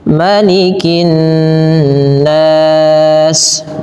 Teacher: Ma-nya pendekkan, jangan malikin nas. Kesalahan yang sering terjadi melafalkan ini adalah memanjangkan ma-nya sebagaimana pada lafal surah Al-Fatihah, padahal dia pendek.